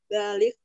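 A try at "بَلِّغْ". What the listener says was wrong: Balir, lamnya double. Balir. Balir, balir, lamnya double.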